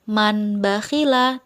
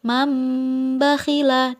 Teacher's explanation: nun mati tersebut digantikan dengan huruf mim tidak Man bahilah tetapi maem Mbak Ilah dan didengungkan maem Mbak